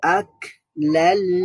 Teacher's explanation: মিমের মধ্যে তাসদীদ, তার মানে গুন্না করতে হবে।